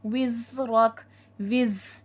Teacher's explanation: وزرک، وز، زا حرف صفیر ہے، سیٹھی والا حرف ہے، سیٹھی والا حرف 3 ہوتے ہیں، زا سین صاد، تو زا میں سیٹھی کی آواز آئے گی، رک، کاف میں ہمس ہوگا، ٹھیک ہے۔